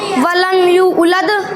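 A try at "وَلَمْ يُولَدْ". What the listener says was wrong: उलद ना है उलद हमजा ना है वहाँ हमजा ना है खाली या है और वाव वलम यूलद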